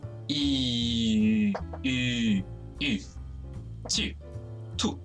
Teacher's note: you keep your tongue in roughly the same position as you do when you're making the sound E. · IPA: /y/